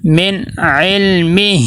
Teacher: اب یہاں پہ دیکھیں نون ساکن اگر اس کے آگے عین حروف حلقی میں سے آ گیا تو یہاں پہ ہم نون کی آواز کو ناک میں نہیں لے کے جائیں گے، من رک جائیں گے، آواز نہیں جانی چاہیے، اظہار حلقی ہوگا۔